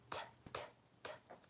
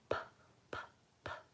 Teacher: Make sure your voice is off, and you really need a little puff of air. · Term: aspirated T